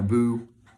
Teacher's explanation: i'm putting on my boo and they leave out the t